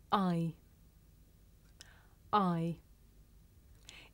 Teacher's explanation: This is a diphthong, a double vowel sound. The shape the mouth makes changes from the beginning of the sound to the end. It's pronounced I.